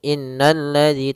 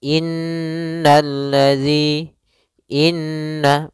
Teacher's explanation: Pada bacaan inna di sini ada huruf nun yang berharakat tasydid. Maka cara membacanya itu kita menahan suara nunnya. Suara nunnya kita tahan dulu baru dibaca. Jangan langsung innalladzi tapi tahan dulu dua ketukan. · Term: ghunah